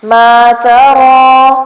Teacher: را کو پر کریں گے کیونکہ اس کے اوپر زبر آ رہی ہے